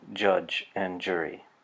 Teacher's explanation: This is the voiced partner of the affricate we just saw. This is the affricate j, as in judge and jury.